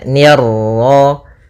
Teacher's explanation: Ni tipis ketemu ro yang ro tafkhim. Ro tebal maka nirro. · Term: ra tafkhim